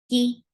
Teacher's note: kaf is a light sound. For kasra, give e sound. The vowel is very short.